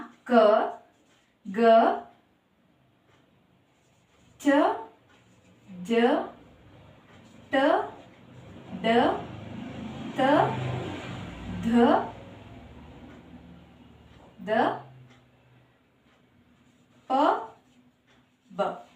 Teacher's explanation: ಕಡಿಮೆ ಉಸಿರಿನಿಂದ ಉಚ್ಚರಿಸಲ್ಪಡುವ ಅಕ್ಷರಗಳನ್ನು ನಾವು ಏನಂತ ಕರೀತೀವಿ ಅಲ್ಪಪ್ರಾಣ ಅಂತ ಕರೀತೀವಿ